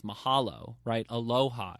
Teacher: It's very sonorous. It has these big open vowels. And that's because they'd be outdoors and they'd be speaking in the open air and the wind would be blowing.